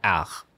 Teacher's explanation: you don't really pronounce the consonant at the end of the word unless it's followed by a vowel